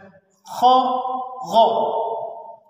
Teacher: غ اور خا، ان کو ادا کیا جاتا ہے حلق کے اس پہلے حصے سے، ان کو پر کر کے ادا کیا جاتا ہے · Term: حروف حلقی